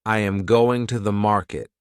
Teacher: the strong words are going and market. The small words are softer. This pattern creates rhythm.